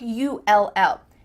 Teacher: It'll What is happening with this contraction? Well, when we say the contraction it will, we kind of add a little u sound before the l. It kind of sounds like u ll.